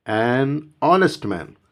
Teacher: h is not pronounced